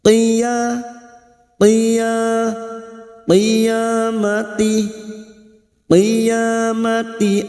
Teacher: huruf qa ini huruf isti'la kita baca tebal. Qiya qiya qiyamati qiyamati ya alif kecil di atas 2 harakat ya mati mim sukun bertemu mim idgham mimi bertemunya 2 huruf mim.